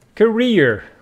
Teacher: with the stress on the first syllable but this one is career with the stress on the second syllable which means your job your profession